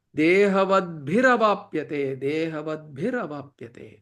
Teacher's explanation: there is a visarga there, that visarga becomes ra, so dehavatbhir avapyate.